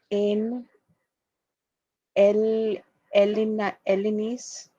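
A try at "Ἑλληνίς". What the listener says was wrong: Helle, it's a rough breathing. Hellenis.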